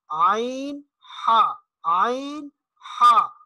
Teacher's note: عین، ہا یہ حلق کے درمیان سے، وسط حلق، بالکل حلق کا جو درمیانی حصہ ہے، گلے کا درمیانی حصہ، وہاں سے یہ 2 حروف ادا ہوتے ہیں، عین، ہا، عین، ہا۔